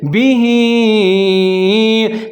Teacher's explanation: छोटी मद भी है, इसको थोड़ा सा लंबा पढ़ेंगे, इसको मद जायज़ कहते हैं